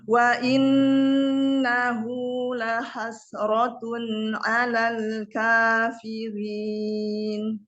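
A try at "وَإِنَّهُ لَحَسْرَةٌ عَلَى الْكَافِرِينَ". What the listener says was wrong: La hasratun 'alal kafirin. Rohnya tipiskan, lamnya juga ditipiskan.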